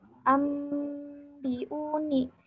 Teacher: Nah, ketika huruf iqlab ini, huruf nun itu enggak dibaca, tidak terbaca. Jadi terbacanya yaitu dengan huruf mim.